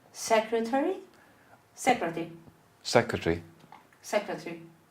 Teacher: Omission of the schwa before L and R.